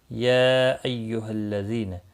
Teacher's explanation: یا مد منفصل ہے، 3 الف کے برابر کھینچ کر پڑھیں گے